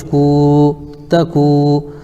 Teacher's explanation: واو ساکن سے پہلے کاف کے اوپر پیش ہے اس لیے واو مدہ ہوگا، ان کو تھوڑا کھینچ کر پڑھیں